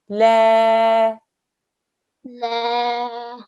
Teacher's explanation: Now this lam is not a thick lam, okay? So don't make it thick.